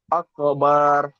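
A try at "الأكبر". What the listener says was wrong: আকবার। জি, টান হবে না, আকবার।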